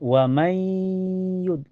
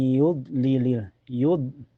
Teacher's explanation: Itu hukumnya idgham bigunah karena nun sukun ketemu ya. Cara bacanya nun sukunnya dimasukkan ke ya dan ditahan sampai terasa ke hidung.